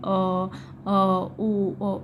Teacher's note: पश्च स्वर जो है जीभ के पीछे का भाग लगता है।